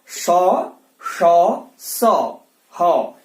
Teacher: इन ऊष्म व्यंजनों में क्या होता है ना, वायु मुख के अंदर रगड़ जाती है